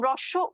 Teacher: প্রসারিত হয়ে যাইতেছে তাই না ই তাই না সেইম ভাবে দেখো যখন রস উচ্চারণ করতেছি তখন কিন্তু ঠোঁট আর প্রসারিত হচ্ছে না ঠোঁটটা হচ্ছে কি কিছুটা গোল আকৃতি হয়ে যাচ্ছে